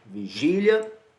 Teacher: a sílaba tônica, é a penúltima, terminada em ditongo